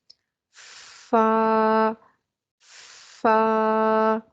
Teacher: فا، فا، تو ہم اسے نرمی سے پڑھیں گے، باریک آواز کے ساتھ پڑھیں گے، پستی اور ضعف کے ساتھ پڑھیں گے، ہلکا پڑھیں گے، منہ بھر کے نہیں پڑھیں گے، موٹا نہیں پڑھیں گے۔